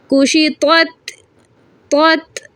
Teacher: دونوں میں ڈفرینٹ ہے. طا موٹا ہے، تا باریک.